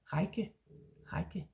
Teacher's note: There is a tiny J, kind of like Danish J, kind of sound after the A, before the double K. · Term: little bit of a J sound